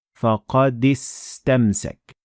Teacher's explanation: میں استمسک میں موجود الف کو مکمل نظر انداز کر رہا ہوں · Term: ہمزت وصل